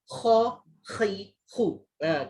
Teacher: Sebab makhraj dia dekat atas ni, dia ada macam efek nak keluar kahak sikit bunyi dia ya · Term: huruf kha